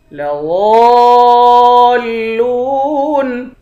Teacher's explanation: لام کو واو کے ساتھ ملا کر واو کو ایک الف کی مقدار کھینچیں گے، آخر میں نون ساکن ہے